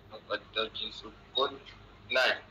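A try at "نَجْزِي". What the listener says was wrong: Naj tambah je depan tu. Naj. Nun fathah jim sukun jadi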